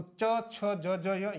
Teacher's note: च वर्ग जो है वो तालव्य है